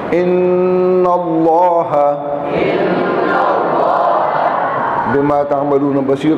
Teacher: نون پر شد ہے تو غنہ ہوگا, اور پھر لفظ اللہ سے پہلے زبر آ گیا تو موٹا ہوگا.